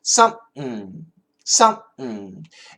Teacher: it's like S-U-M, some, but then kind of make a P, but don't finish the P. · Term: glottal stop